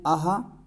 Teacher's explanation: देखेंगे लिखा हुआ है विसर्ग विसर्ग देखेंगे क्या होता है तो विसर्ग का उच्चारण कंठ से होता है और यह भी सघोष होता है और महाप्राण होता है महाप्राण का मतलब होता है ज्यादा वायु निकलती है जब हम · महाप्राण का मतलब होता है ज़्यादा वायु निकलती है। जब हम बोलते हैं आहा तो हमारे मुख से वायु की मात्रा ज़्यादा निकलती है, ज़्यादा वायु निकलती है, इसीलिए इसे महाप्राण कहा गया है।